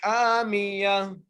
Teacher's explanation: را کو بغیر گنہ کیے پڑھنا ہے کیونکہ را کے بعد تنوین ہے نا، اور تنوین کے ساتھ حروف حلقی میں سے ہا آ گئی ہے، اس لیے بغیر گنہ کیے پڑھنا ہے. نارون، ہا کو ایک الف کی مقدار کھینچ کے پڑھنا ہے